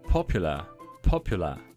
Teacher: Porque tenía dos P's muy plosivas.